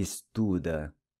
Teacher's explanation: The final ‘’a’’ is pronounced /ɐ/ as in ‘’Cuba’’.